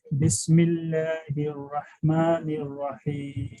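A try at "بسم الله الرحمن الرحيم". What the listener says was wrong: Again, minimize lip movement. Bismillah. Look, you're saying Bismillahir-Rahmanir-Rahim, and I'm saying Bismillahir-Rahmanir-Rahim.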